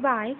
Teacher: English word by can be described as a glide or movement from front open unrounded to front half closed unrounded.